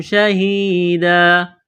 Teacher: یہاں جب وقف کریں گے تو 2 زبر کی تنوین کو الف سے تبدیل کریں گے